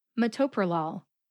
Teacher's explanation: The second syllable, to, gets the emphasis.